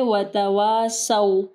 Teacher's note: صاد کو ہیوی پڑھنا ہے، واو کے ساتھ الف مدہ ہے